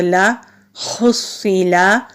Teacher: لام کو لمبا نہیں کریں گے، زبر زیر اور پیش کو لمبا نہیں کیا جاتا، جلدی پڑھا جاتا ہے، تو اس کو لا نہیں کہیں گے، لا پڑھیں گے۔